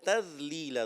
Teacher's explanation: ذال کو باریک کرنا چاہیے